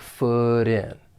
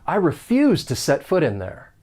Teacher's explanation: we can link that final consonant sound, that flap T, with the beginning vowel sound in. And it's going to sound like foot in.